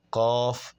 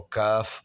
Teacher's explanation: اندر والے حصے کو جب آپ پڑھیں گے تو قاف، اور تھوڑا سا باہر آ کے جب ادا کریں گے تو کاف ادا ہوگا۔ اس طرح قاف اور کاف کے درمیان میں جو فرق ہے وہ واضح ہو جائے گا، اور یہ رد و بدل کی غلطی سے بھی ہم بچ جائیں گے، اور اس میں کوئی مشکل نہیں۔